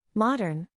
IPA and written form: ˈmɒd.ərn (Modern)